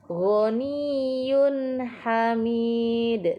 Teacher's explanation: Kemudian di sini juga terdapat bacaan izhar halki, yaitu pada bacaan ghaniyun hamid. Di sini tanwin bertemu dengan huruf ha, dibaca jelas atau izhar halki.